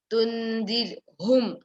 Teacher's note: Tundirhum, ha should come from the throat.